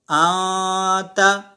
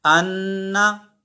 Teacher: یہاں نون ظاہر نہیں ہو رہا، نون کی آواز ناک میں بھی جا رہی ہے اور چھپ بھی رہی ہے. ٹھیک ہے، خالی نون کی آواز ناک میں جا نہیں رہی بلکہ جانے کے بعد چھپ بھی رہی ہے. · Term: اخفا